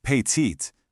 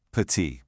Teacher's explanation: That T is totally silent. The sound stops right at the vowel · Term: silent letters